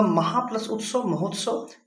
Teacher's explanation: बड़ा आ और छोटा ऊ, बड़ा आ और छोटा ऊ मिल करके ओ बनाते हैं, ओ बना रहे हैं। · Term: गुण संधि